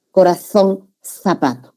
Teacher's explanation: Interdental, esta es la Z española